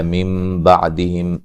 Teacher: او وہ مدہ ہے، من بعدہم نون ساکن کا یہاں اقلاب ہے، نون کو میم سے بدل کے پڑھیں گے۔